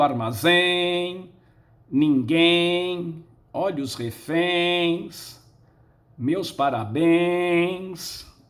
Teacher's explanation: A sílaba tônica é a última, terminou em ens, coloca-se acento.